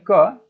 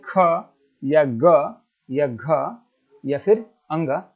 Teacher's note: कंठ द्वारा जैसे कि बोलेंगे क आप जैसे ही बोलेंगे क तो आपको ऐसा लगेगा कि आपका आवाज कहां से आ रहा है तो ये कंठ से आ रहा है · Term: क वर्ग